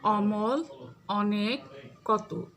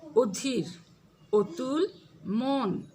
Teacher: সংবৃত উচ্চারণটা হচ্ছে অধ্বনি বিবৃত উচ্চারণে চুয়াল বেশি ফাঁক হয়, ঠোঁট তত বাঁকা বা গোল হয় না, কিন্তু সংবৃত উচ্চারণে চুয়ালের ফাঁক কম ও ঠোঁট গোলাকৃত হয়ে ও এর মতো উচ্চারিত হয়